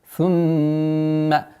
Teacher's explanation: ثم удвоение, первое правило, удвоение с назализацией, полной назализацией над буквой мим